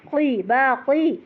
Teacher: با کھڑا زبر ہے لمبا، قاف موٹا